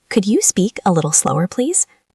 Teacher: Listen to my voice. It goes up at the end. It's friendly.